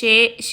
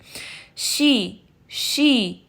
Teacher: Sharp سے میرا یہ مطلب ہے کہ آپ نے صرف شے نہیں پڑھنا، بلکہ ای کی ساؤنڈ یعنی جو کسرہ کی ساؤنڈ ہے، ٹھیک ہے، اس کو آپ نے شارپ رکھنا ہے، جو یعنی جبڑے کو نیچے لے جانا ہے۔